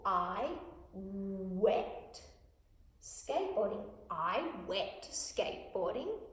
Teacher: The T sound may be stronger. They may hear the T sound and they may miss completely the N sound.